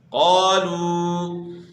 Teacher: یہاں بھی آپ نے مد اصلی کرنی ہے، یعنی ایک الف کے مقدار کے برابر کھینچنا ہے